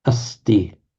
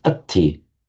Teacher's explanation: So you have asti, ist, est, есть, all with exactly the same meaning, going back to an Indo-European root, and yet the ati form demonstrates a standard phonetic variation from Sanskrit, the sibilant plus t becoming aspirated t